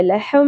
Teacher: ہا کی آواز اقصا حلق یعنی کہ سینے کی جانب سے ادا کرنی ہے، سانس کی آواز نہ آئے، لہم نہیں پڑھنا، لہم.